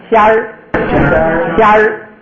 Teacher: 读书的时候呢，经常把这个ra读出日这个音来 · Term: 读书音